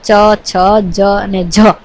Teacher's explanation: ચ, છ, જ અને જ એ માત્ર સ્પર્શ ધ્વનિ ઘટક નથી, પરંતુ એ સ્પર્શ અને સંઘર્ષી ધ્વનિ ઘટક છે